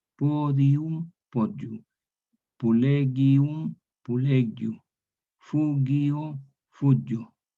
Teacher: Entonces ahí es por eso que el tallot surge por la tendencia a la diptongación, porque lo que estaba en hiato se transforma en diptongo. Podium, podium, pulegium, pulegiu, fugio, fugio.